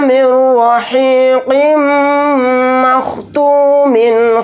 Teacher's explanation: यहाँ पर मीम को साकिन बनाकर पढ़ेंगे हालत वक्फ में। मीम के ऊपर तशदीद है तो यहाँ पर हम गुन्ना करके पढ़ेंगे